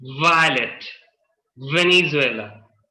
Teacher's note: so come to the f position no vibrations were there same position vibrate your vocal cords